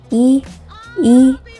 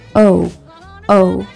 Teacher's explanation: We also pay attention to how spread the lips are or how rounded the lips are. Are your lips spread like in the North American English E, E, or rounded like in the North American English vowel O, O